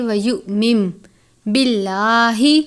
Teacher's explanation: یعنی نون نہیں پڑھنا، میم کی آواز کے ساتھ پڑھیں گے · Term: اقلاب